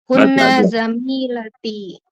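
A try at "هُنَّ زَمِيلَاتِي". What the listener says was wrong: Wah, yang benar bacanya Bu. Panjang pendeknya salah itu.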